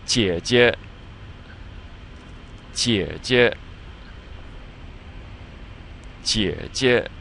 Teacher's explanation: on the first one there's the 3rd tone, but on the second one it's pronounced neutrally, without a tone